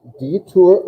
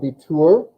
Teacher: Detour, umlaut, U. So it's a little bit tighter U sound.